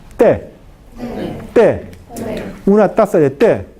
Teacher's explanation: El ápice de lengua debe tocar los dientes superiores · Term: t del español